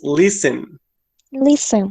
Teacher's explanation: So the word that it's, or yes, the letter that it's omitted in there is the T. The T sound is not part of the pronunciation. Maybe in the written form, but not in the pronunciation.